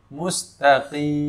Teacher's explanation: Ketika kita wakaf pada huruf mim, ya, maka kita tunaikan sifat bainiyahnya, suara sedikit mengalir.